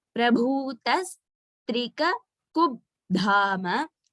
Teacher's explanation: Actually, that half ba is also highlighted, but it is not a Mahaprana. Only the dha is a Mahaprana.